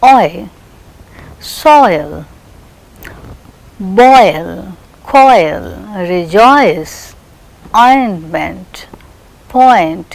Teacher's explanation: It is articulated as a glide from a back rounded vowel between open and half open, and it glides to a position, a centralized front unrounded vowel just above the half close position.